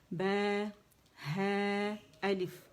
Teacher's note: دونوں ہونٹوں کے گیلے حصوں سے ادا ہوگا